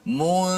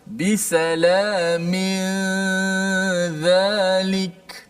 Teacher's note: hujung lidah kita tidak naik ke atas langit. Maknanya daripada mim terus pindah kepada zal. · Nun hanya kita kekalkan pada gunnah di hidung saja. Sebut mu, mulut kita terus pergi, lidah kita pergi huruf zal tanpa menekan-nekan huruf zal, hanya standby di makhraj zal. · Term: ikhfa hakiki